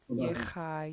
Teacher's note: your first vowels will be low tone, then low tone, and this third one will be high tone